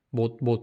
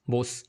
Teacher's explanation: 중세국어 때 이 시옷 받침은 어떻게 발음했냐? 모스 해서 약간 S 발음이 남아 있었던 거죠. 그래서 차이가 났었습니다.